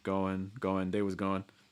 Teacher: They was going. And again, it's almost like you're taking off that ng sound and just kind of leaving with the n